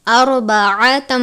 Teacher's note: را ساکن ہے، را کو پر پڑھتے ہیں